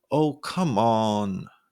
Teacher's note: the same pitch sound B playful or begging oh come on holding oh o and on to sound dramatic or teasing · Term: held pitch